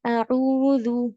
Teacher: تو یہ مسٹیکس نہیں کرنی ہے، کچھ کبھی بھی تلاوت ہو، اعوذ، ٹھیک ہے، اعوذ، اور عین کے بعد جو ہے دمہ ہے، اس کے بعد واو ہے، تو یہ 2 کاؤنٹس والا مد ہے، اس کو ہم اسٹریچ کریں گے 2 کاؤنٹس، زیادہ نہیں، ایک دم کم بھی نہیں، 2 کاؤنٹس۔